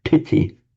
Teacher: sometimes the T will become retroflex. That's where we get piti, with the subdotted T.